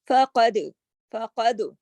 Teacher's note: فقد کاف موٹا اور دال کلکلے کے ساتھ